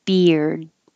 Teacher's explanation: you do have to put your tongue in the d position but don't release it just hold it there